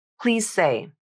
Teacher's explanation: you have a final Z in please linking to an s in say the Z is voiced and the S is voiceless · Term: voicing assimilation